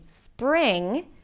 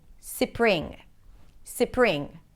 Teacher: Arabic speakers might break the cluster and add vowels between the consonants so it's easier to pronounce or it's obeying the rules of Arabic.